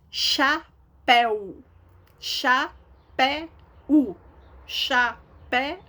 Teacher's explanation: Então, todas essas palavras aqui, elas são oxítonas, porque a sílaba tônica dela é a última. A sílaba tônica, a sílaba mais forte, é a última.